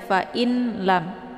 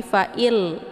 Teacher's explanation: ya Jangan dibaca Fain lam tapi fa'il ya langsung di tasjidkan Fa dibaca pendek illam ditekan saja ya kemudian dileburkan langsung suaranya ke dalam huruf lam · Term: Idgham Bilaghunnah